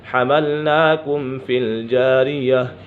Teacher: با اور میم کے علاوہ کوئی بھی حرف آ جائے تو میم ساکن میں اظہار شفوی ہوگا، یعنی غنہ نہیں کریں گے ، یہاں پر غنہ نہیں ہوگا۔ حَمَلْنَاكُمْ فِي الْجَارِيَةِ لِنَجْعَلَهَا، لِنَج